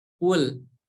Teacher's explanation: Yang harus diperhatikan bahwa makhraj dari huruf qaf ini berada pada pangkal tenggorokan